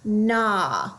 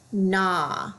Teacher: You then should notice you have a GN. The G will be silent. All you hear is the N.